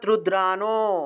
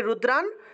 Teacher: আমরা দন্ত্য নটাকে হসন্ত হিসেবে আগের অক্ষরের সাথে অর্থাৎ রুদ্রার সাথে একসাথে উচ্চারণ করছি, তাহলে রুদ্রান।